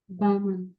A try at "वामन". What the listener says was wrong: ब क्यों बोला, व क्यों नहीं बोला? उच्चारण संबंधी प्रक्रिया हो गई। आप बोल वामन ही रहे हैं, लेकिन जो मुंह से उच्चारण बाहर आ रहा है वो बामन आ रहा है।